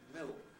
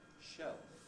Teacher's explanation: l involves tongue tip on alveolar ridge air coming out round the sides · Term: dark l